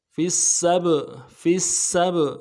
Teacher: اگلے سین کو با کے ساتھ ملانا ہے, با کے اوپر جزم ہے, قلقلہ ہوگا